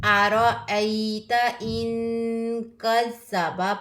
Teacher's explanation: नून साकिन के बाद काफ आया है, हरूफ इख्फा में से है, तो यहाँ पर हम क्या करेंगे, इख्फा करेंगे, इजहार नहीं करेंगे. अरअयत इन कज़्ज़ब पढ़ेंगे, इन कज़्ज़ब नहीं पढ़ेंगे.